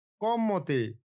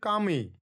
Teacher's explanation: অটি পরিবর্তিত হচ্ছে আ দীর্ঘস্বরে